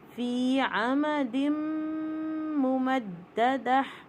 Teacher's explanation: فی میں دیکھیے یا ساکن سے پہلے زیر ہے 2 کاؤنٹ